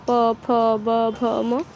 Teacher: हमारा उच्चारण करते समय ओठ एक साथ आते जैसे प बोलते तो ओठ एक साथ प फ ब भ · हम लोग प वर्ग के हैं, हम प वर्गीय हैं, हमारा उच्चारण करते समय ओठ एक साथ आते हैं। जैसे प बोलते तो ओठ एक साथ आता है, प फ ब भ म, तो वह एक साथ तब ओठ हमारा एक साथ आता है, तब उच्चारण निकलता है। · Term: ओष्ठ्याः